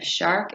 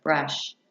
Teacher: The sh sound is a voiceless frictive sound. The sound for sh is sh, as in the beginning of shark and the end of brush.